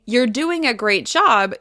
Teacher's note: When you say it normally, you're doing a great job, you bring attention to the compliment, which is your point.